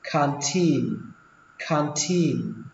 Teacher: xuống giọng âm đầu tiên và lên giọng âm tin